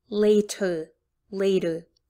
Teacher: in the word later later you don't hear a strong t in the middle